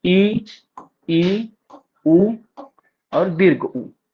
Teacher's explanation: जब जीवा का व्यवहृत भाग स्वर के उच्चारण के लिए मुख में अधिकतम ऊंचाई पर होता है तथा मुख संवृत यानी क्या कहते हैं उसे, बंद हो जाता है, ऊपर और नीचे के दांत पास पास आ जाते हैं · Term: संवृत स्वर